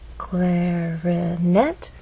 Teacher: clarinet has three syllables clarinet but it's the final syllable that is stressed